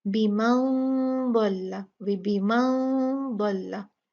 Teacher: यहाँ हम नून साकिन का इख्फा करेंगे, और ये इख्फा जो है ये भारी होगा, मुफख्खमा होगा